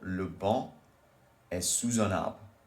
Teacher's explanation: Because on starts with a vowel as well, you pronounce the S at the end of sous, which is usually silent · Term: la liaison